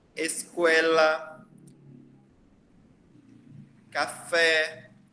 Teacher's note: Então, o E, a gente geralmente pronuncia ele bem fechado, tá certo?